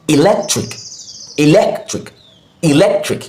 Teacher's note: Pronounced at a higher pitch, longer and slower.